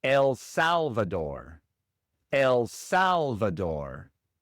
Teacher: Igual el acento va en la primera sílaba en Salvador y la r inglesa y no española. Y entonces es el Salvador, el acento, la primera sílaba.